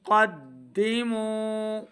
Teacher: قاف کو موٹا پڑھنا ہے قاف حروف مستعلیہ سے ہے